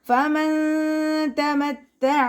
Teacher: അയിനിൻ്റെ സൗണ്ടിനെ clear ആക്കാൻ ശ്രദ്ധിക്കുക, ഹംസയുടെ സൗണ്ടായി പോവാതെ നോക്കുക. മഖ്റജ് വരുന്നത് തൊണ്ടയുടെ മധ്യഭാഗം.